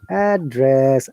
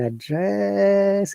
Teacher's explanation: Address, upper to down, and address down to upper. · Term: Intonation